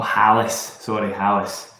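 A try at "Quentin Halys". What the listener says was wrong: H is silent. H is silent. Yeah, I mean, it's French, so H is silent.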